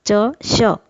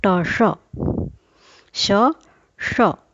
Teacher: यहाँ एक बात और स्पष्ट हो जाती है, हमारी वर्णमाला में दो तरह के श हैं, एक तालव्य श, दूसरा मूर्धन्य श। तालव्य श का उच्चारण जहाँ से हम चवर्ग बोलते हैं च श, और मूर्धन्य श का उच्चारण जहाँ से हम ट बोलते हैं